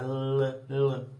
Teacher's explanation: Porque você coloca a língua para cima e o ar sai pelas beiradinhas da língua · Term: lateral